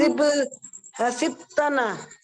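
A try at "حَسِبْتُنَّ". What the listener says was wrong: हसिब तुन्ना, तुन्ना है, हाँ तुन्ना है, ठीक है, उसके ऊपर शद है, तुना नहीं है, तुन्ना है।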